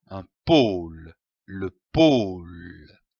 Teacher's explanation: L'association de ces deux syllabes donne le mot pôle, comme un pôle. Attention ici à l'accent circonflexe. On traîne le O.